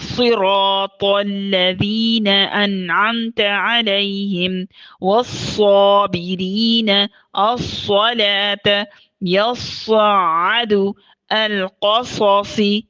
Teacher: اب صاد رخوہ ہے، اس کے اندر نرمی ہوتی ہے، آواز جاری رہتی ہے، محموسہ ہے، سانس جاری ہوتا ہے، مفخم ہے، یہ موٹا ہے، بھرا ہوا ہے، گویا کہ یہ ہمیشہ موٹے انداز سے موٹی آواز سے ادا کیا جاتا ہے، ترکیب کی اس میں کوئی گنجائش نہیں ہوتی۔